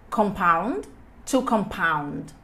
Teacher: Eu vou fazer a força enfatizar no final.